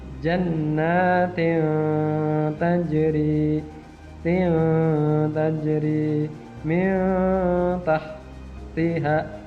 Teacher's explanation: Tanwin bertemu dengan ta. Nah, ta itu termasuk bacaan ikhfa atau huruf ikhfa, maka cara bacanya adalah samar. Samar huruf n-nya. Bukan dibaca jannatin, tapi jannatin tajri min tahtiha.